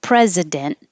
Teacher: you don't have to say the T, hold it in the end position